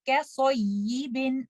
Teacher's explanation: Remember to make your sad heavy and kaf light. And try not to make your sad light because of kaf and not make your kaf heavy because of sad.